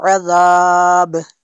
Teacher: عذاب، یہاں پہ وقف کریں گے تو عذاب اس کو پڑھنا ہے، با پہ قلقلہ ہوگا